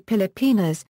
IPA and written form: pɪlɪˈpinɐs (Pilipinas)